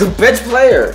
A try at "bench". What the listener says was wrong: You gotta put the inch in there. Bench.